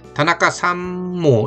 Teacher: 그 다음에 다나카 시도 옵니다 할 때 뭐뭐도에 해당하는 조사 모가 왔을 때는 다나카 삼모 이렇게 이게 상모가 아니라 삼모 이렇게 미음으로 저절로 나는 거예요. 다나카 삼모 키마시다 이런 식으로.